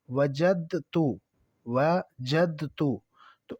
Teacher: یعنی دال تا کے اندر مدغم ہو جائے گا، تو اس ادغام کو ادغام متجانسین کہا جاتا ہے۔ · مثال سے سمجھیں، جیسے وجد تو اب یہ دال جو ہے یہ ساکن ہے، آگے تا جو ہے یہ متحرک ہے اس میں، تو یہ دال اور تا ان دونوں کا مخرج ایک ہی ہے لیکن لفظ مختلف ہیں